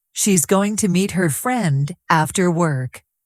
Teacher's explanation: The strong words are going, meet, friend, work.